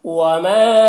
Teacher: وما میں الف مدہ ہے، ایک الف کے برابر کھینچیں گے